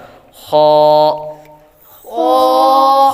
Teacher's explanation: حلقے اوپر والے حصے سے ادا ہوتا ہے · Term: حروف حلقیہ